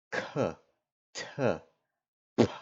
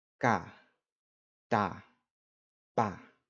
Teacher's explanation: We have a couple consonants that sound pretty much like they do in English, but there's one important difference. K, T, and P in Spanish are unaspirated. So what this means is when you pronounce them, you don't say them with a puff of air.